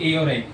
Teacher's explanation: ये कंठ से और तालु से मिलके निकलती है ये साउंड ए और ए। इसलिए इसे बोला जाता है कंठ तालव।